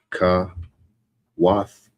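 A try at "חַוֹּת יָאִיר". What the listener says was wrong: Kawata. Don't forget the ta.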